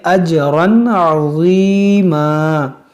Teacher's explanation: یہاں پر تنوین کے بعد عین ہے تو یہاں پر ہم اظہار کریں گے